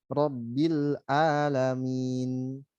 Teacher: Kemudian rabbil alamin pakai ain berubah menjadi hamzah.